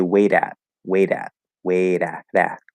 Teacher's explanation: going to become flapped because when uh in american english um when a t connects over to a vowel same thing with a d when it connects over to a vowel it becomes flapped